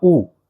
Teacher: ए, ई, आ, जब आपने इनका उच्चारण किया तो होंठ आपके गोलाकार नहीं हुए, लेकिन जब आप ऊ का उच्चारण करते हो तो आपके होंठ गोलाकार स्थिति में आ जाते हैं।